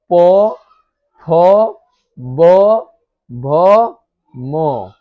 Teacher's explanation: ओष्ठ मतलब ओठ में ओठ सट रहा है